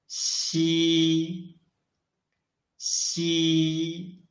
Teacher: Unlike ji and qi, when we read xi, the airflow is not blocked at all.